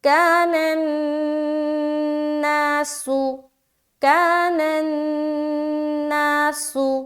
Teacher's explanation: کا میں الف مدہ کر رہے ہیں، نون کو نون سے ملاتے ہوئے ہم کیا کریں گے؟ نون مشدد کا غنہ